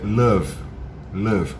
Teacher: É uma coisa entre u com o meio misturado, mas não é nenhum nem outro